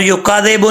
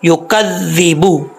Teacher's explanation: और युकाज़िबु नहीं पढ़ना, युकाज़िबु, काफ के बाद जो जाल है, जाल के ऊपर शद्द है, काफ को जाल से कनेक्ट करेंगे, मिलाएंगे। या पे यू, काफ ज़बर जाल कज़, जाल ज़ी, कज़्ज़ी, युकज़्ज़ी, बा पेश बू, युकज़्ज़िबु।